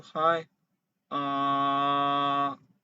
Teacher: the second tone is from low to high